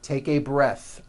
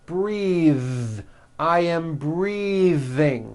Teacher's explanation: Breath is a noun. Take a breath, unvoiced. But when you change it into a verb, the vowel changes and it becomes breathe. I am breathing with a voiced TH.